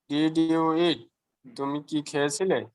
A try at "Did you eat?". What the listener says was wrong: Very good.